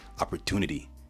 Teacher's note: In AAVE, however, they don't necessarily pronounce the T, they switch it out for a D. If we take a word like opportunity, they'd say opportunity, right?